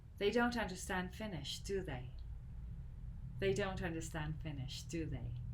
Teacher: But when I'm sure and I do know, then my intonation goes down.